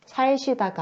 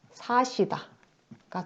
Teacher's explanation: 살다의 살, 어간에 받침 리을이 있는 상태에서 그 뒤에 시옷을 만났을 때 리을 탈락이 일어나는구나. 그래서 살시다가 아니라 사시다가 되는 겁니다.